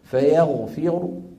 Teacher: اذا وقفنا عليها بالروم معناها نقف براء مضمومه صوتها منخفض